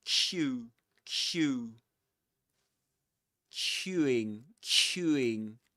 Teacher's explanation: The lips go forward. Q. Q. And they get quite rounded. You get Q queueing queueing.